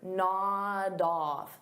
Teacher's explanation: So notice I'll take that d sound and I'll connect it on the off.